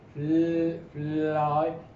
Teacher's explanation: The tongue is raised, touching the ridge